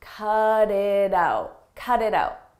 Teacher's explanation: In American English, when a T comes between vowels, we change that to a d, a very soft D. Cut it out, cut it out.